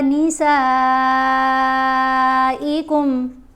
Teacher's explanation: سین کو ہم نے 5 الف جتنا لمبا پڑھا کیونکہ اس کے اوپر مد متصل ہے۔ اس مد کو 5 الف جتنا ہم نے لمبا پڑھنا ہوتا ہے۔